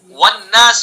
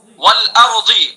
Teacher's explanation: دونوں ہونٹوں سے ادا ہوگا لیکن دونوں ہونٹ پورے نہیں ملائیں گے، بس گول کریں گے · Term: واو متحرک